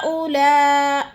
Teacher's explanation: ہاں میں بھی مد متصل، اولا میں بھی مد متصل، 2 مدیں ایک کلمے میں آ گئی ہے